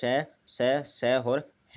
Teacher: उसके बाद आता है इनके जो संघर्षी व्यंजन हैं, संघर्षी व्यंजन हैं वो इनके बोलने में हवा घर्षण रगड़ के साथ निकलती है और गर्म उष्म हो जाती है, इसे इसलिए इन्हें उष्म व्यंजन भी कहते हैं।